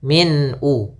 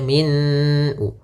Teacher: Kemudian pada lafal min ada bacaan izhar halqi, yaitu ditandai dengan tanwin pada huruf mimnya bertemu dengan hamzah, maka suara tanwinnya harus jelas